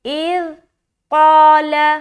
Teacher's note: قاف کو منہ بھر کر ادا کریں گے کیونکہ یہ ایک موٹا حرف ہے. اس کو ہم حروف مستعلیہ کے اندر یہ آتا ہے اور اس کو ہم موٹا کر کے ادا کریں گے.